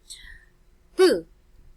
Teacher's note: the sound of P here is a bilabial voiceless sound since P is produced using the two lips